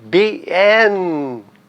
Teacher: Olha onde eu coloco a sílaba tônica no en